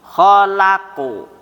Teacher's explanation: Kho tebal, la tipis, qaf tebal.